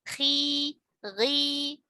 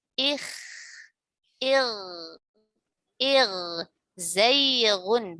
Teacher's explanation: Adapun huruf kha dan huruf ghain yang sebelumnya kasroh atau sebelumnya huruf lin ya, dia dibaca tafkhim nisbi.